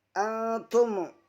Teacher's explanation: Selanjutnya antum ikhfa safawi, karena nun sukun bertemu dengan ta. Cara membacanya menyamarkan suara nun sukun dan disertai dengan dengung.